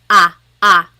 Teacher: So the letter A is more like an ah sound, ah, ah. And sometimes in English, the letter A is very short, like bat and hat. We don't want it flat like that. We want it more open, so ah, ah.